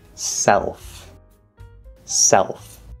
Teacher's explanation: the l there which in this case is not just spelling it actually is an l but it's a half l which is what i call the dark l · that half l vowel sound actually colors the third vowel e we call it an l colored vowel and so it's going to sound